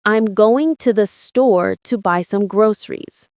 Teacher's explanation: Notice how native speakers don't pronounce each word with equal emphasis. They stress going, store, buy, and groceries, while reducing words like to, the, and some. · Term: stress patterns